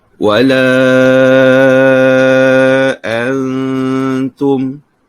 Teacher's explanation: nun mati bertemu dengan huruf ta, iaitu hukum ikhfa hakiki. Kita dengung dengan kadar panjang bacaan sebanyak 2 harakat